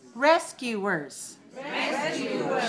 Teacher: 3 syllables, stress the first one.